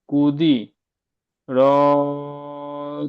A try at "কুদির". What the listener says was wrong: কু টান হচ্ছে কেন? কুদির।